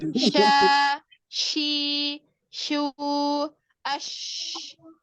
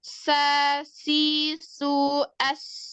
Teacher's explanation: Kalau shin, suaranya menyebar. Kalau sin, suaranya menyempit. Tetapi dia tajam.